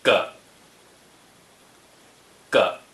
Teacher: 個 (个) is the neutral tone.